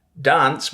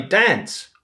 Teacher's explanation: some people might say dance with the palm vowel, while others say dance with the trap vowel